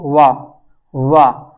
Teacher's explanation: आप वा का उच्चारण करेंगे तो ऐसा नहीं हो सकता है कि आपके ओट भी कार्य ना करें और दांत भी कार्य ना करें दोनों ही कार्य करेंगे